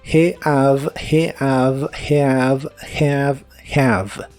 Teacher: La H en inglés casi siempre se pronuncia como una J suave, así que dices have. La A de have es un sonido vocal que es una combinación entre la E y la A. Digamos que son los sonidos E-A juntos.